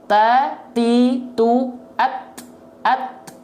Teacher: Dari ujung lidah menyentuh dengan pangkal gigi seri atas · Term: huruf ta